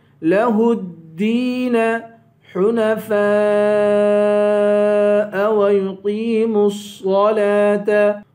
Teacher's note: حنفاء پہ مد ہے، فا کے بعد الف ہے، الف پر مد ہے، اس مد کو 5 الف کے برابر کھینچیں گے